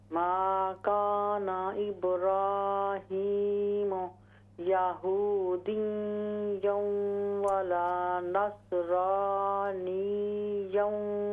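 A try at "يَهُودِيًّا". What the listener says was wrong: ये यहूदिय्यों, ये या मुशद्दद है, इसमें गुन्ना नहीं होगा।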